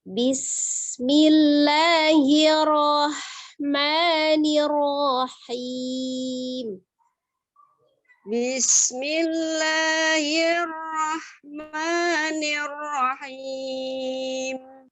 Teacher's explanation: Ada sin sukunnya, alhamesnya, ada udara yang mengalir. Kemudian dia memiliki sifat desis.